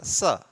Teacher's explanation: जिह्वा दांत के पास आती है तो दंत स का उच्चारण होता है